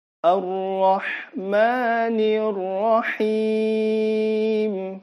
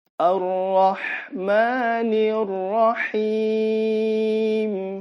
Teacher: Ingat, matnya jangan lebih dari 2 harokat, karena ini adalah mat asli. Kecuali ini yang terakhir bisa 4 sampai 6.